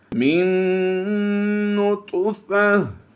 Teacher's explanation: یہاں پر طا حروف مستعلیہ سے بھی ہے اس لیے پر کریں گے، اور حروف قلقلہ سے بھی ہے